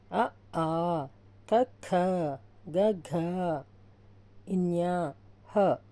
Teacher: కంఠ్యములు అంటే కంఠం నుండి పుట్టినవి అ ఆ క ఖ గ ఘ న్ హ ఇవి కంఠం నుండి